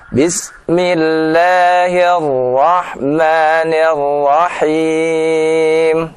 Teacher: huruf ro ya ketika bertasydid ya, maka ee lebih kita tahan supaya tidak terdengar getarannya lebih dari sekali ya · karena sifat ra adalah takrir yang bergetar, maka kita harus menghindarinya agar tidak bergetar lebih dari sekali